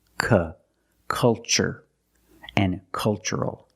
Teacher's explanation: the first syllable is a short u like cup and up uhuh make a relaxed sound